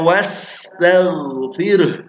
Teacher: Sinnya was mengalir, mengalir tapi dinaikkan